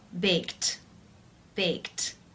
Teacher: form to bake is the k k sound it's unvoiced therefore the e d is pronounced t unvoiced with the t sound